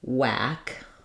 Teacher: wh used to be kind of uh have that breathy H sound before the W now it's just the same as a w sound